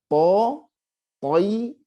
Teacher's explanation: Ada pantulan. Qalqalahnya dia masuk ke yang tebal. Ya. Jadi bunyinya ke o, tidak ke e ya.